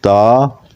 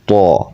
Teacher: تا جو ہے یہ سمپل پڑھا جائے گا، اور تو اس میں استعلاء موٹا پڑھیں گے